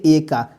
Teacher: ए का जो उच्चारण स्थान है ना कंठ एवं तालु से होता है